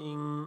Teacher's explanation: হামজা নুন সাকিনের পরে ইকফা হরফ সিন, এজন্য গুণ হবে